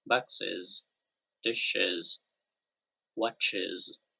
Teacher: notice that there is um vibration so the vocal chords vibrate with these sounds